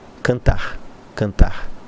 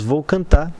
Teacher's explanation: dos registros por exemplo na nossa região nós temos vou cantar o r praticamente não é pronunciado